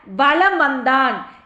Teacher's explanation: வகர எழுத்து வந்திருக்கிறதுனால மகர மெய்யானது தனக்குரிய அரை மாத்திரை அளவிலிருந்து குறைந்து கால் மாத்திரை அளவில் ஒலிக்கிறது. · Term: மகர குறுக்கம்